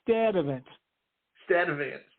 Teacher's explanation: They did not pronounce the R in Sturtevant because it was followed by a T.